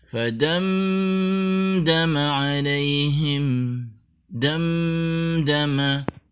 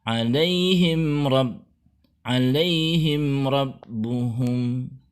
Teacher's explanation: mim bertemu dal adalah izhar syafawi, yaitu bunyi M yang asli tidak ditambahkan gunnah. Begitu juga kita tidak boleh menahan suara mim sukun di alaihim yang di depannya bertemu dengan huruf ra, karena huruf ra termasuk huruf izhar syafawi.